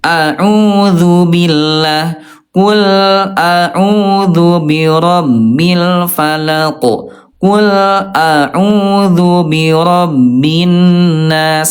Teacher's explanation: hamzah dulu baru ke ain, pangkal tenggorokan dulu baru ke ain